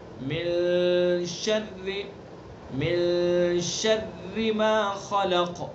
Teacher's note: اخفا کہتے ہیں ناک کی جو نرم ہڈی ہے، ناک کا بانسا، وہاں سے ادا کریں گے اس کو